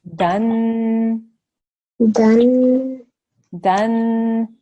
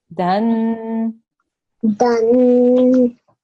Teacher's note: You have to make a stretched nasal sound at the end.